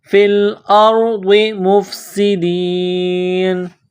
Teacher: جب یہاں سٹاپ کریں گے تو نون کو سائلنٹ کریں گے